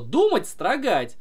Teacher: думать на у падает ударение а строгать на а